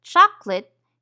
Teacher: when we say the word chocolate, we usually eliminate the syllable that contains the schwa.